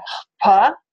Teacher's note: Normally we'd write it after the p, but here it's before, to indicate that the aspiration comes before the p sound is produced, not after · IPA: ʰp